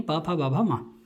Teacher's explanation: पवर्ग यानी पा फा बा भा मा, इनका जो उच्चारण स्थान बताया वो क्या बताया, ओष्ठजौ, ओष्ठ है नहीं, ओष्ठ स्मृता।